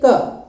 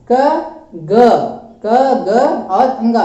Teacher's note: जैसे कि क मतलब ये कंठ से निकल रहा है